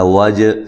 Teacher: جیم پہ قلقلہ کرنا ہے